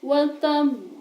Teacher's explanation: cara membacanya adalah dengan memantulkan huruf qalqalah dengan benar-benar jelas, besar dan tebal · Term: qalqalah kubro